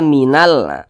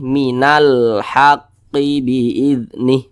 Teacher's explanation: karena cara membaca huruf lamnya ini dia dibaca jelas terbaca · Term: izhar qamariah